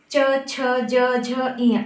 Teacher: फिर आते हैं च वर्ग, च, छ, ज, झ, इय। आप देखते हैं हमारे दांतों को हमारी जीभ टच कर रही है